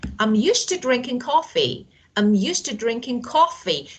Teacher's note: I emphasize the word coffee. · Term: sentence asterisk